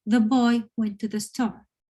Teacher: Whereas if you want it just as a sentence, as a fact, the boy went to the store. It's kind of falling at the end, right?